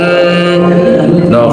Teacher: Coba pijit hidungnya pasti nggak ada suara mati. Coba no, karena memang suaranya 100% di hidung, gunanya 100% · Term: nun